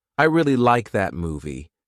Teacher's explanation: The Words really and movie are likely to be stressed